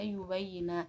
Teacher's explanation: huruf ba mati bertemu huruf ba hidup sehingga dibaca yubayyina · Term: idgham mutamasalin